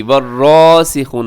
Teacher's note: را کی پر کھڑی زبر ہے، تھوڑا سا کھینچ کے اور را کو موٹا بھی پڑھیے گا۔